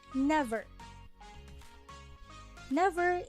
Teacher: each foot is composed of the same word which has two syllables in which the first is stressed and the second one is unstressed never never is an example of a trochaic foot and since